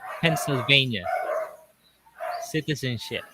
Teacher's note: when I pronounce the beginning of Pennsylvania, it doesn't have vibration. But along the way, when I reach to V, I feel vibration, a strong Yes.